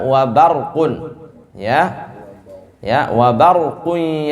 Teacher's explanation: tipis baknya, roknya tebal